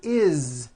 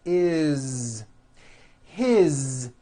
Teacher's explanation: they are all pronounced with a voiced Z